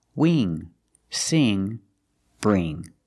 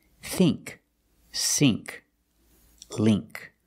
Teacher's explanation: Use the long E sound, not the short I.